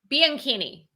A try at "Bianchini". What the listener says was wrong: Bianchini. But the way that you say it, it sounds like there should be an E instead of an A.